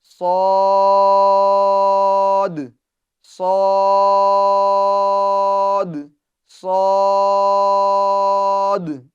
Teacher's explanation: ہونٹوں کو گول نہیں کرنا ہے، پور کرنے میں ہونٹوں کا سہارا ہمیں نہیں لینا ہے، بلکہ اس طریقے سے ادا کرنا ہے، صاد، صاد، صاد، ٹھیک ہے؟ اس کو پور کرنا یہ اس کی صفت ہے، باریک نہیں پڑھیں گے، اور دوسری بات اس کو تھوڑا سختی کے ساتھ بھی ہم ادا کریں گے۔